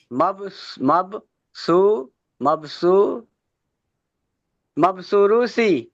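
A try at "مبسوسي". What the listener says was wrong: মাবসুসি, শুধু মাবসুসি, সুরু এখানে রু তো নেই, তাই না? মাবসুসি।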